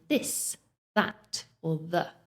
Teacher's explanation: The second sound, the, is voiced. That means we do use our voice to pronounce it.